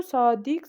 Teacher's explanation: Vurğu son hecaya düşür.